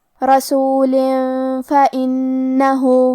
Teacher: کلمت فإنه نون پہ تشدید ہے تو ہمیں 2 حرف کے برابر نون کو پڑھنا ہے